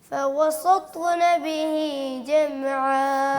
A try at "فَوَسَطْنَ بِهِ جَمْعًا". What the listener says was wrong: بس تا کو موٹا کرتے وقت ہونٹوں کو گول نہ کریں. یعنی آواز کو ناک میں نہیں لے کے جائیں.